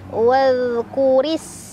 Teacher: Wadh, hati-hati mantul. Dhal, suaranya mengalir rokhawah, ya, lembut.